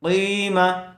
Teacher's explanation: زیر والے حرف کے بعد آگے یا ساکن آئی ہوئی ہے، اس لیے یہاں پر یا مدہ ہوگا، قاف کو تھوڑا کھینچ کر پڑھیں گے۔ قیمہ، جب یہاں پر وقف کریں گے، آیت کریں گے تو اخیر والے حرف کو جزم دے کر سانس توڑ دیں گے۔